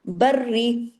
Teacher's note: Double را ہے لیکن را باریک پڑھا جائے گا، کیوں؟ زیر ہے۔